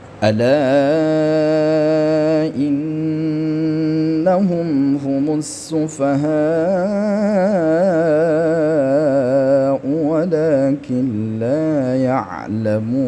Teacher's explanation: Humus sufaha ini mad wajib muttasil, panjang 5 harakat. · Ala innahum, di sini kan jelas ada mad bertemu hamzah di lain kalimat, sama hukumnya yaitu mad jaiz mufasil. Kemudian ada nun gunnah musyaddadah, didengungkan 3 harakat ya sekurang-kurang. Hum, kemudian mim mati bertemu dengan ha, ini adalah izhar syafawi ya.